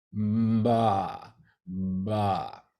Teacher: For ba, the vocal cord vibrations happen before the lips open up.